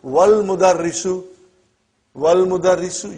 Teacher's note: you did not pronounce Hamza. Okay? Because it's Hamzatul Wasal.